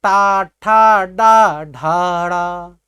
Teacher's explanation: पहले जैसे आप बोलते हैं टा ठा डा ढाड़ा, तो देखिए आपकी जो जिह्वा है यह ऊपर उठ जा रही, अर्थात मूर्धा से सट जा रही